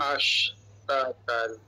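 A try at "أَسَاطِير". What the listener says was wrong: Ha panjang sikit. Panjang sikitlah pada taat ta ni panjang sikit.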